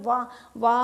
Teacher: वाह वाह हमने होठों से बोला वाह, मतलब हमारे होठ पूरी तरह से मिले नहीं, इसलिए हम आधे आधे मिले, तो इसलिए वाह वाह बोलने में हमारे होठ आधे मिले, इसलिए यह अर्धस्वर हुआ।